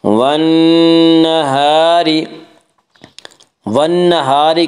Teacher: نون مشدد غنہ ہوگا, غنہ کی مقدار ایک الف ہے